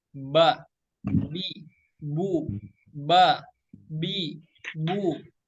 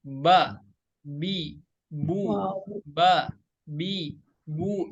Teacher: Menempelkan kedua bibir tanpa disertai dengan guna. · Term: huruf ba